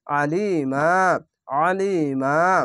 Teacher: আলিমা, জেরের পাশে ইয়াসাকিন এক আলিফ টেনে পড়বেন, আইনটিকে মোটা করে গলা চিপে পড়বেন, এবং এখানে আয়াত আছে তার জন্য একটি জাবার আলিফের সঙ্গে মিলিয়ে এক আলিফ টেনে থেমে যাবেন। আইন যাবার আ, লাম ইয়াজলি, আলি, মিম আর যাবার মা, আলিমা, আলিমা।